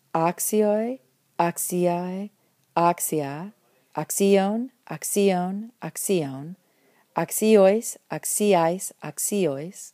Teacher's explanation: Persistent accent, this time trying to be an acute on the third-to-last, and of course, as you can see, it gets pulled to the second-to-last when the last syllable in the different cases becomes long.